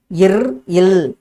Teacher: நாவின் நுனி, மேல்வாயின் நுனியை மிகவும் பொருந்துவதால் பிறக்கும் எழுத்துக்கள்